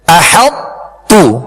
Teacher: طا کو تا میں اس طرح داخل کیا کہ طا کی صفت پر یہ صفت موٹا ہونا اس کی باقی رہی۔ احط تو جی، احط تو آخر میں تو کی آواز نہیں نکالیں گے، تا کو باریک پڑھیں گے۔ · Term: ادغام ناقص